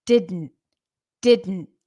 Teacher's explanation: like you're saying D and then a d and an N you don't necessarily pronounce the T